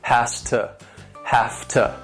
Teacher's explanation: Now, these reductions also sound like they may be one word with two syllables. And again, the stress is on the first syllable, and the second syllable is once again reduced with that schwa sound